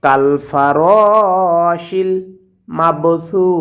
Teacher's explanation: সাটা জিব্বার আগে থেকে নরম করে উচ্চারণ করব, এবং আয়াতের শেষে যদি ওয়াকফ করি তাহলে আমরা জানি মদের হরফের বামের হরফে ওয়াকফ করলে সেখানে তিন আলিফ টেনে পড়তে হয়, এটাকে মধ্যে আরজি বলে, অতএব আমরা এখানে তিন আলিফ টেনে পড়ব।